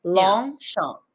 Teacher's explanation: It's like you don't have to close your mouth. You don't have to do the P.